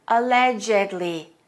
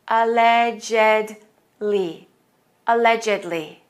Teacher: The ed is pronounced as a separate syllable.